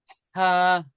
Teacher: এই যে আমাদের গলার ভিতরে একটা কন্ট্রোনালী হা। আছে, কন্ট্রোনালীর মাঝে থেকে উচ্চারণ হবে